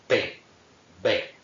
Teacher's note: Esto con la P pues se nota muy claramente, cerramos totalmente los labios, ¿verdad? Para pronunciar ese fonema. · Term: oclusivas